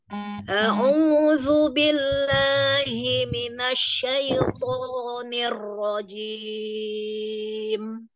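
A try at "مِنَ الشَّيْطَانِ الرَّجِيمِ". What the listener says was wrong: Masih buru-buru. Di syin dan roknya.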